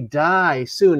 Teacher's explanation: ends with the dissipation of sound after two hard stressed syllables